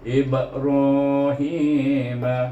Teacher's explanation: Ba mati. Itu ba adalah huruf qalqalah, maka baca dengan qalqalah sughra. Ra di sini bertemu dengan alif, ha bertemu dengan ya, sebelumnya baris bawah ya.